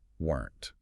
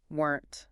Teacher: It looks like it should have two syllables, but native speakers usually swallow it into one fast sound.